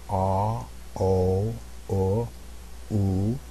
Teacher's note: my jaw progressively comes up as my lips get rounder that's one of the characteristics of these of these round vowels